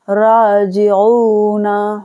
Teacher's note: تو با کو کھینچا ہم نے، تو کو کھینچا، نا کو نہیں کھینچیں گے اور سی کو نہیں کھینچیں گے، ٹھیک ہے، باسطونا، را الف زبر را، جیم زیر جی، عین واپس او، نون زبر نا، راجعونا، را کو کھینچنا ہے را، جی کو نہیں کھینچنا ہے، جیم زیر جی، عین واپس او کو کھینچنا ہے، حلق سے نکالیں گے عین کو، عین واپس او، نون زبر نا، راجعونا۔